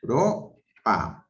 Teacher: Tengo ahí dos vocales, una abierta y una cerrada, están juntas. Europa. Ahí no hay un hiato, no hay una separación de vocales juntas.